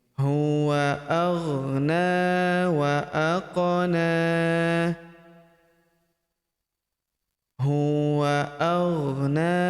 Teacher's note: Huruf na kita panjangkan dua harakat karena terdapat tanda alif kecil di atasnya